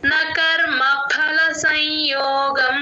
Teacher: ముందు ఎప్పుడు సున్నా వచ్చినా మనం సగమే చెప్తాం ఆ అక్షరాన్ని ఆ అనుస్వరాన్ని సంయోగం నోసిల్ సౌండ్ వస్తుంది అలా ముక్కుతో పలుకుతాం